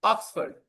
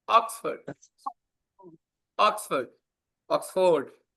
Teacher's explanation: The stress is on the first syllable and that's why the correct pronunciation is Oxford.